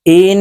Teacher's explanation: নুনের উপরে তাসদি আছে তাই এই হামজা নুনের সাথে গুন্নার সহিত পড়বো